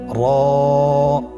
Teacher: জিহ্বার আগার উল্টা পিঠ তার বরাবর উপরে তালুর সঙ্গে লাগিয়ে উচ্চারিত হয়